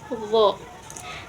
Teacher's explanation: Huruf d ujung lidah dengan ujung gigi seri atas. Do. A di tengah tenggorokan.